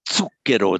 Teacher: an initial Z in Italian is pronounced like a ts, as in zucchero, the ts